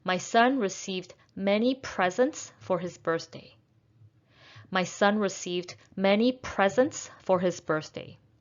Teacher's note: presence is a noun so we're going to stress the first syllable